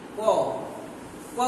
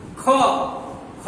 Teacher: আর খ উচ্চারণ করলে আমার নাভি পর্যন্ত স্পন্দিত হয়েছে, এটা হচ্ছে মহাপ্রাণ।